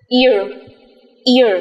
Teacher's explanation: Chúng ta đọc nguyên âm thứ nhất dài hơn một chút và nối với nguyên âm thứ hai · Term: nguyên âm đôi